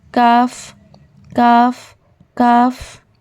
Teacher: काफ same, बस फ़र्क क्या है कि जहाँ से कॉफ अदा हुआ था ना, ठीक है, इसका क्या है सुनिए। जब ज़बान का आखिरी हिस्सा, deepest part of your tongue, और उसके मुकाबिल नरम और सख्त तालू, मतलब हार्ड एंड सॉफ्ट पैलेट से लगते हैं तो हर्फ काफ अदा होता है। ठीक है, इसे लाइट पढ़ेंगे, बारीक पढ़ेंगे।